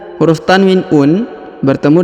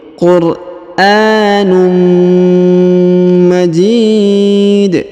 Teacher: Huruf tanwin un bertemu dengan mim bertasdid, maka didengungkan dan disamarkan. Huruf tanwin unnya menghilang melebur ke huruf mim.